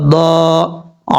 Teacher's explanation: दाद हुरूफ मुस्तालिया में से है, दाद भी पर पढ़ा जाएगा, आगे अलिफ मद्दा, एक अलिफ की मिकदार इसको लंबा करके पढ़ा जाएगा।